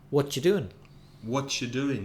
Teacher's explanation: you becomes a ch when you ask someone what are you doing · They don't bother about the word are. They don't even say it.